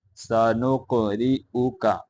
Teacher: قاف کے اوپر قلقلہ کریں گے